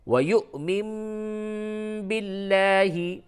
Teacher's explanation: باللہ میں لام کو باریک کر کے پڑھیں گے · اور یہاں پہ واو کے اوپر حمزہ ہے، اس وجہ سے یہاں پہ جھٹکا ہوگا